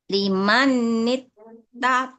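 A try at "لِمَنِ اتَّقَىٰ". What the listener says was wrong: Nunnya enggak boleh ditekan karena tidak bertasyid.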